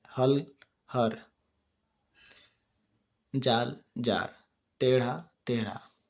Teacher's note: ल के स्थान पर र का प्रयोग इसमें होता है